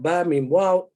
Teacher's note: start with the lips. Okay, so you have Ba, Mim, Waw, both lips